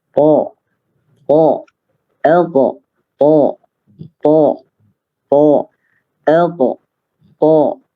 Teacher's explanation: jadi ujung lisan berada di tempat keluarnya gigi seri atas